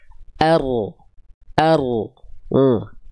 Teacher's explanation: jadi si ujung lidahnya nggak betul-betul nempel. Yang nempel adalah bagian punggung lidahnya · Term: huruf ro